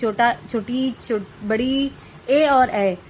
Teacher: अग्रस्वर जिन वर्णों का उच्चारण करते समय जीभ का अगला भाग ऊपर नीचे होता है उसे अग्रस्वर कहते हैं